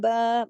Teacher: बा पे खड़ा जबर है, एक अलिफ के बराबर पढ़ा जाएगा।